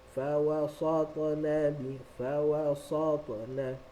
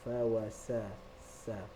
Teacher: sin sifat dia sentiasa nipis, so kita bawa dia ke arah senyum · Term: huruf yang nipis